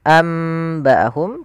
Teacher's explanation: yaitu suara nunnya diganti dengan mim